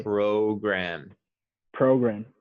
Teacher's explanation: the o is the long o sound it sounds like the letter o